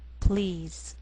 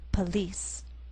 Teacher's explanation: the first is one syllable and the pl blend together please in the second word we have two syllables and the